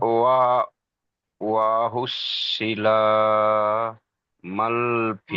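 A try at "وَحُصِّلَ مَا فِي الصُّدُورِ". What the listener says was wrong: মা টান দেন, মাল কেন বলছেন, লাম নেই, মা টান দেন। এর সাথে যোগ হয়ে যাবে, সদে তাসদিদ আছে, মা ফিস।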